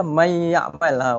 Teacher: huruf nun tidak lagi kedengaran